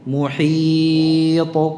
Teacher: Tebal. Tapi jangan dibuka rahangnya sehingga terkesan fathah ta'nya. Ta'nya sukun.